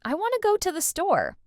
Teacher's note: In real, natural speech, we'd actually say, I want to go to the store. The T's are barely audible.